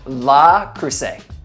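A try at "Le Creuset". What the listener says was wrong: La Crusade. But it's an E, it's L-E, yeah.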